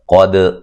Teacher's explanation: قاف کو موٹا ادا کریں گے، دال پہ قلقلہ کریں گے